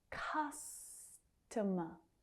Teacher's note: Customer. Again, that stress on the first syllable, the second and third reduce down to the schwa, the unstressed vowel sound.